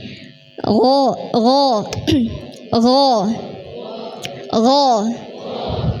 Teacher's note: pertemuan antara pangkal lidah bertemu dengan langit-langit tenggorokan bagian belakang nggih. Dan di situ menyempit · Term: gain